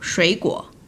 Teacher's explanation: 水果 So the three third tones together, the first and third tone will turn to rising tone. So 水果 102.